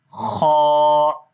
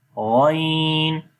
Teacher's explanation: तो थोड़ा सा यहाँ पर फर्क आपको महसूस होगा कि खा थोड़ा सा हल्का सा ऊपर वाली जगह है और गैन के अंदर हल्की सी नीचे की जगह है, ये जो कव्वे के करीब है